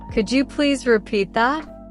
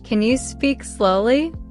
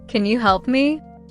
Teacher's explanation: Stress important words like help, repeat, and slowly.